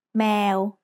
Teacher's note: In this word, the initial consonant is มอม้า The vowel sound air gets attached to it, so then we have แม Finally, the letter วอแหวน comes at the end. It makes a W or O sound that blends with the vowel to give us the word แมว